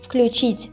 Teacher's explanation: We write the, but if we have the unvoiced consonant, then it becomes f